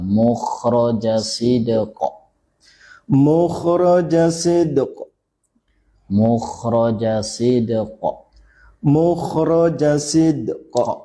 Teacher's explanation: qalqalahnya dia yang pertama sid, qalqalah sughra. Qafnya baru qalqalah wusta ya, pertengahan yang berhenti tanpa yang bukan tasydid.